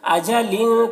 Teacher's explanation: مد ہے یہ بھی مد منفصل ہے، اجلین کے تنوین میں لام کے نیچے جو تنوین ہے اس میں اخفا ہو رہا ہے ، تنوین کے بعد کو ناک میں چھپا کر پڑھیں گے،